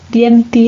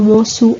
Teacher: se produce el cierre de la E y la O finales, dienti en lugar de diente o mosu en lugar de mozo.